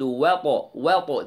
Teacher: the wow is light the طا heavy and قلقلة